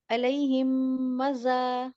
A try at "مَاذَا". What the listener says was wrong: میم پہ الف میں مدہ ہے نا, کتنا لمبا کھینچیں گے؟ میم الف زبر ماں, تو 2 حرکت کھینچے. ماں لمبا کریں. علیہم ماذا. آپ را کھینچ رہی ہوتا ہے ماں بھی کھینچے نا.